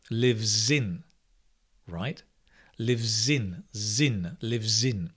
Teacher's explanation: I'll give you some examples, but you can see, for example, he lives in Canada. The z, when you connect the z sound, is much clearer. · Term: connected speech